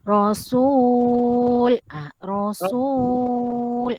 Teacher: Rasul mad arid li sukun dibaca dengan 2, 4 atau 6 harokat.